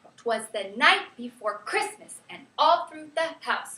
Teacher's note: the rhythm for that goes down, down, up, down, down, up, down, down, up